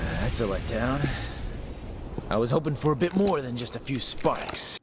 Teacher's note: voice is very breathy, relaxed.